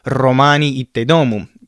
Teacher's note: the R's are rolled in Latin and especially on the first syllable. It is just like Spanish where you would say "ruh" in the beginning.